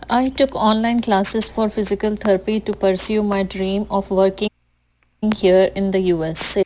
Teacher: you mostly speak in a monotone with almost equal emphasis on all the words and the sentences that you speak